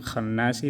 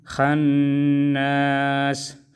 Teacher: اور وصلاً ہم خناسی پڑھیں گے اور وقفاً خناس. خناس میں نون مشدد میں غنہ کریں گے، ادھر اخفا، میم میں اخفا اور را کو باریک پڑھیں گے.